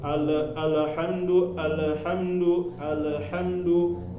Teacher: lam baru keingatan sekarang ketika bacanya itu jangan sampai dipantulkan karena ada orang-orang yang membaca lam ini dipantulkan